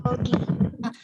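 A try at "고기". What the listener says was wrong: O-nya agak dimonyongkan sedikit mulutnya jadi gogi. Sedikit lagi gogi.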